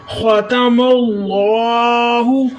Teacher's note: خا کو آپ نے موٹا کرنا ہے اور حلق سے خا کی آواز نکالنی ہے، خا نہیں پڑھنا، خا پڑھنا ہے۔